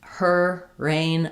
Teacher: In American English, her rain, I'm using the exact same position. Just when I'm doing her, I'm sliding into it. When I'm doing rain, I'm sliding out of it. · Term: American R